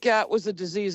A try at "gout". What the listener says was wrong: The way you pronounced it. You said gat. Gat. I was saying, what the fuck is gat?